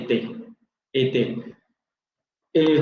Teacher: Anterior semicerrado no labializado